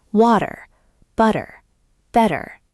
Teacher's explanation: Yes, that's called a flap T. We change the T to a fast D sound.